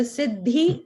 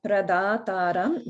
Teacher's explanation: the Siddhi, Dhi is Mahaprana, but Da in Pradataram, that Da is regular, Alpa Prana. So no Mahaprana there.